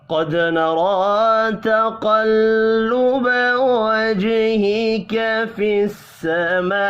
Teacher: گا۔ قد نرى تقلب وجهك في السماء، قاف پر پڑھیں گے، دال ساکن پر قلقلہ کرنا ہے ، را کے اوپر کھڑی زبر ہے، اس کو بھی ایک